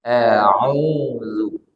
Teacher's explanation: Kemudian a'udzu setelah ain ada huruf waw. Ada huruf waw, waw mad. Maka dia menunjukkan panjang 2 harokat.